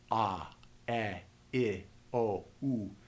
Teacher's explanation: The ah is the one that is pronounced in the back of the throat, where the gutturals are pronounced.